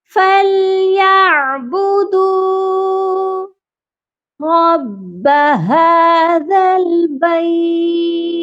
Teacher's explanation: فَلْيَعْبُدُوا رَبَّ هَذَا الْبَيْتِ اس آیت کے بھی پہلے ورڈ میں فَلْيَعْبُدُوا رَبَّ، بدو دال کو بنا کھینچے پڑھ دیتے ہیں، جبکہ دال کے ساتھ واو مدہ ہے، اسی لیے ہم اس دال کو بھی کھینچ کر پڑھیں گے